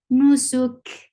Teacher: Whenever these are with sukun, so you will give hums. And hums is a flow of breath. So you are applying hums here on kaf.